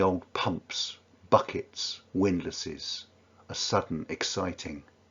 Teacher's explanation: The harsh plosives and the sibilants on pumps, buckets, and then windlasses.